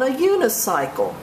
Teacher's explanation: Even though unicycle begins with a vowel, the U sounds like a Y. When a vowel sounds like a consonant, you use the indefinite article a.